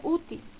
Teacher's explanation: útil tiene el mayor golpe de voz en U y termina en consonante L, por tanto lleva tilde.